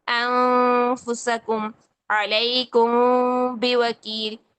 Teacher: हमने नून की नून के और मीम की आवाज को नाक में जाके छुपाना है। प्रॉपर गुनगुनाहट नहीं करनी। · ہم نے نون کے اور میم کی آواز کو ناک میں جا کے چھپانا ہے، پراپر گنگناہٹ نہیں کرنی. تو جب گنگناہٹ نہیں کرنی، آواز کو جا کر چھپانا ہے، تو 2 سیکنڈ کے جتنا ٹائم بھی لگانا ہے، زمانہ بھی لگانا ہے. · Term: इफा, چھپا ہوا غنہ